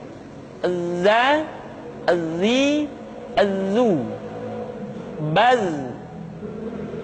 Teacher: ketika kita mengucapkan huruf Z, suara kita mengalir, akan tetapi nafas tidak boleh mengalir.